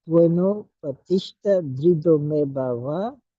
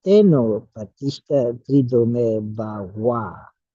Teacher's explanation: So notice that the VA versus the WA at the end of words, the Tibetans prefer to pronounce the V as a W